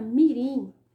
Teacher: a posição da sílaba tônica está em último lugar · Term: oxítona